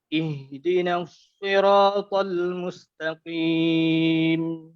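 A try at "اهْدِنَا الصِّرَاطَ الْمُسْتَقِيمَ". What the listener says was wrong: Okey, baris bawah si dengan baris bawah ti. Betulkan, tepatkan bunyi baris bawah. Ihdinas Ihdinas siratal mustaqim.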